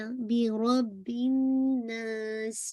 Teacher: نون مشدد پہ جب بھی آپ ہولڈ کریں گے تو دس از دا موسٹ کمپلیٹ غنہ اکمل غنہ